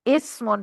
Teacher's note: इस्म सीन से है ना, इस्मुन सीन की आवाज सीटी से आती है